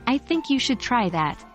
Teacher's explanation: if we stress I the sentence sounds like I think you should try that not anyone else